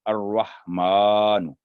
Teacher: یعنی کہ لام درمیان میں سائلنٹ ہوگا، را پر تشدید ہے